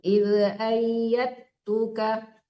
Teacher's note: nggak boleh dikolak-kolakan dalnya kalau di depannya huruf ta. Walaupun ta-nya tidak tasbih, tetap tidak boleh dikolak-kolakan dalnya ya.